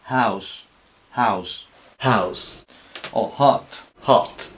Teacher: De tal forma que, por ejemplo, esto mal dicho sería house, con una especie de J, y en realidad no es una aspiración de aire muy suave, una J pero muy suavizada